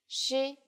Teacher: it sounds like the SH in English, only with flatter lips